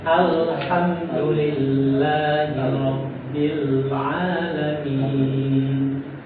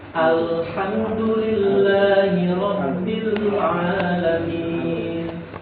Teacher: Jadi huruf lam itu adalah tepi lidah bagian kanan.